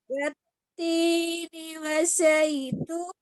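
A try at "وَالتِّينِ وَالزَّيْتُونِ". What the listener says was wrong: Tasydid za. Wazzaitun. Ulangi.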